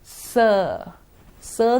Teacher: In the S sound, the tip of the tongue comes close to the alveolar. And when the breath passes through, there is audible friction.